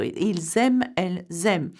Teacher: il and elle have an S and the verb begins with a vowel such as aimer, you make a liaison